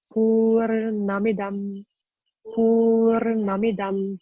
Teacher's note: And you see a dot underneath the N. So those are all more cerebral N. Every time you gotta roll the tongue back.